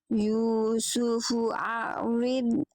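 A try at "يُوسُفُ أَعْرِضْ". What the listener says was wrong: hamzah dulu, baru ain. A-nya harus tahqiq. Jadi mentahqiqkan bunyi hamzah, menjelaskan bunyi hamzah dulu. Yusufu a'rid. Jadi A-nya jelas dulu. A baru E.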